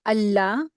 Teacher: लाम के साथ अलिफ मदा है तो दो हरकात खींचेंगे